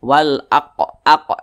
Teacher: huru Qalqalah maka cara bacanya itu dipantulkan